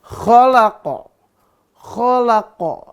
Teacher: Qa-nya harus keluar tuh dari apa? Dari pangkal lidah tuh.